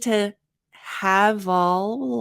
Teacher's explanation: notice how much linking there is here so we need to have all so we have the V to the a the V to the a rather because it's actually the sound